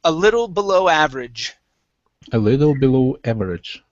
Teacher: Make sure to put the stress at the very end.